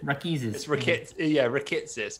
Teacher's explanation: it's just a lot of emphasis on the I there.